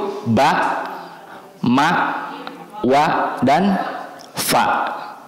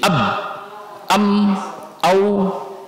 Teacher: Dan huruf ba itu termasuk kepada makhraj syafatain, dua bibir, bukan lisan ya, syafatain dua bibir. Yang dua bibir itu ba, ma, wa, dan fa.